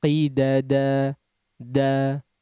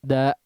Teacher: Di situ kadarnya dua harakat. Kemudian jangan diakhiri dengan hamzah, artinya menutup kedua pita suaranya ya. Tapi dihabiskan di udara.